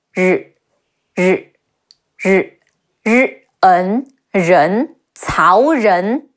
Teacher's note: Your tongue is curled upward against the top of your mouth.